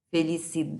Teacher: A sílaba tônica de felicidade aqui, felicidade, é uma paroxítona, porque a sílaba tônica não é a última, é a penúltima